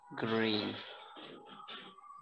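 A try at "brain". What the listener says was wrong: ग्रेन नहीं ब्रेन।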